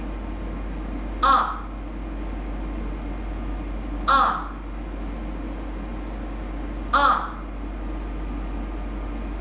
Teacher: So you will notice a stop on the sound, so it will be shortened. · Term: short sound